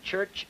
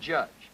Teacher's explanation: Voiceless and voiced africates as in church and judge. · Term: affricates